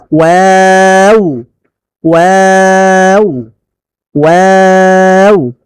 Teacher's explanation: ঠোঁটকে গোল করে ওয়াও বলে ঠোঁট ছড়াবে, আবার ঠোঁট গোল হয়ে যাবে শেষে। দুই ঠোঁট গোল করে মাঝখানে সামান্য ফাঁক রেখে ওয়াও বলতে হয়, ওয়াও ওয়াও ওয়াও।